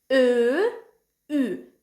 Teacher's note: bunları tələffüz edən zaman dodaqlar bir qədər irəli gəlir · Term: dodaqlanan